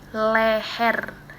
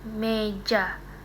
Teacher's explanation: Meja leher lebih terbuka ya. Leher kata leher itu lebih terbuka mulutnya dibandingkan dengan meja.